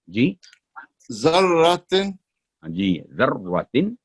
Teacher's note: اب را کو پر کر کے بولیں دوبارہ ذرا، را پر ٹھہر کے